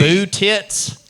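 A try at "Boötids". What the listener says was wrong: Tids, No, with a D. tids.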